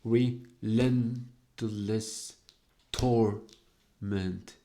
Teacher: the accent is on the first syllable of Torment